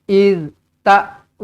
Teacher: Iz ta'murunana, panjang 4 atau 5 harakat di sini. Mad jaiz munfasil.